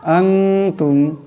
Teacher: আনতুম, এখানে নুন সাকিন, নুন সাকিনের পর তা আসছে, নুন সাকিনকে ইকফার গুন্না করে পড়তে হবে, একালি পরিমাণ ইকফার গুন্না হবে